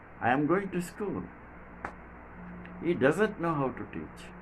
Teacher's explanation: both affirmative and negative sentences end in falling tone